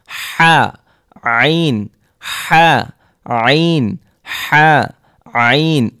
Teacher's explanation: হলকের মধ্যখান হতে উচ্চারিত হয় আইন হা